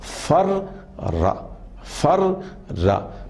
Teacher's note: را کے اوپر تشدید ہے اور را کی آواز 2 مرتبہ ادا کی جا رہی ہے۔ فر را، پہلا را ساکن ہے، دوسرا را متحرک ہے، مفتوح ہے، تو اس کو مضاعف فعل کہتے ہیں۔